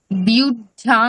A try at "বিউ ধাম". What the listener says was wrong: না, বিউ ধাম ম্যাডাম, আপনি ঢয় আকার আছে, তাহলে তার উচ্চারণটা খুব সরল ভাবে করুন, মানে একটা জ ফেলা করছেন কেন এক্সট্রা? বিউ ধাম।